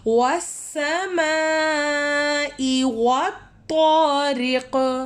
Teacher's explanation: والسماء میں میم کے اوپر مد آ رہا ہے، ہم نے میم کو لمبا کرنا ہے